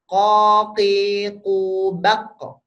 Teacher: Jadi angin nggak ada. Kita ngomong ko itu nggak ada anginnya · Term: huruf qaf